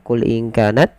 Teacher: bertemu Kaf seperti tadi ya Qul in kanat J di sini kita lafalkan dengan bacaan Ikhfa yaitu menyamarkan suara nunnya kepada huruf Kaf